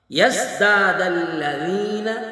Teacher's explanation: زا کو سختی سے ادا کریں گے، جیسے سین کو دانتوں کو جوڑ کر سختی سے ادا کیا جاتا ہے